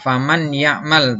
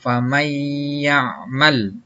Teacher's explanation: Contohnya dibacanya tidak faman ya'mal, tapi dibacanya famay ya'mal, ya. Jadi masuk disertai dengan dengung. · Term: idgham bihunna